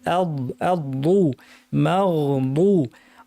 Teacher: বদ হরফটা জিব্বার দুই পাশ ব্যবহার করে আমাদেরকে গাল থেকে উপরের পাটির দাঁত থেকে উচ্চারণ করতে হবে।